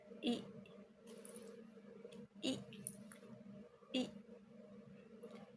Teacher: Mulut sedikit terbuka, lidah berada di posisi tinggi dan terangkat ke depan. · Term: fonem I